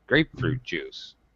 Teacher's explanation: because we go high and then low on fruit, we have to go up again with juice.